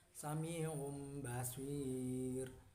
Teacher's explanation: mengganti suara nun sukun atau tanwin menjadi mim sukun dan disertai dengan dengung selama 2 harakat · merubah bunyi nun mati atau tanwin menjadi bunyi huruf mim mati apabila disambut oleh huruf ba, dibaca dengan tempo 2 sampai 2,5 harakat atau ketukan. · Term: iklab